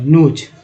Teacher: या इसी को बना देंगे एक और वर्ड NOSE, तो ओ का उच्चारण भी ओ ही की तरह हुआ, नोज। एस का उच्चारण यहाँ पर ज के रूप में हुआ